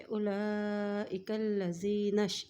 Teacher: کاف کو لام کے ساتھ ملائیں گے کیونکہ لام کے اوپر شد ہے